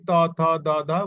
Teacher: ত বর্গের মধ্যে আছে কি ত থ দ ধ মূর্ধন্য, এই পাঁচটি। এটা হচ্ছে জিহ্বার সম্মুখে প্রসারিত হয় এবং অগ্রভাগের উপরে দাঁতের পাটির গোড়ার দিকে স্পর্শ করে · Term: দন্ত ধ্বনি